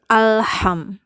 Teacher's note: Alham itu adalah makhraj tenggorokan ya, sehingga pengucapannya harus membuka rahang dengan sempurna, karena nanti akan terdengar seperti alham, seperti alham.